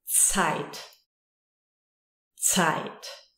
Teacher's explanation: It's always sharp. Z. It's like a ts.